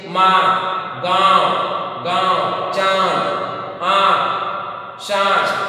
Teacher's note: वायु, नाक और मुंह दोनों से बाहर निकलती है, उसे अनुनासिका कहते हैं।